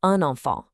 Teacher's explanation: that N just acts as the perfect little hook to join the two words, nice and easy.